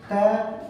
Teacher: दांतों से स्पर्श कर रही है। त बोलते हैं, दांत के साथ हमारी जीवा टच हो रही है